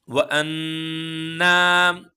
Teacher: एक अलिफ के बराबर हम नाक में आवाज को रखेंगे और एक ही अलिफ के बराबर हम इसको खींचेंगे। यह गुना होगा यहां पे। · یہاں پر اخفا ہوگا. وَأَنَّا 1 الف کے برابر ہم ناک میں آواز کو رکھیں گے اور 1 ہی الف کے برابر ہم اس کو کھینچیں گے. یہ غنہ ہوگا.